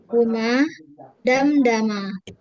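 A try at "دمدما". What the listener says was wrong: Panjang ya, Bu. Ma.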